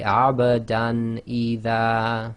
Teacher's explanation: So we have the Fathatain on the Dal followed by Hamza. So you just say Abadan Idha. So no Ghunna, no assimilation. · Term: Izhar